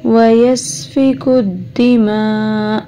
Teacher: حمزہ وقف کی صورت میں یہاں پہ تھوڑا سا جھٹکا لگے گا اور حمزہ ساکن ہو جائے گا